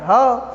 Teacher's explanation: तो ह वर्ण का उच्चारण स्थान क्या है? कंठ है।